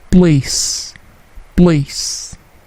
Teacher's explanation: P-nya tidak plosif, bukan place, tetapi place.